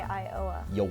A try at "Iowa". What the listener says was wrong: Iowa. Iowa. Iowa. There's like a couple more syllables in there if you can work them in. It's Iowa. Iowa. Iowa?